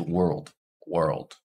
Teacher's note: this is just one vowel sound followed by an l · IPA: [wɚld]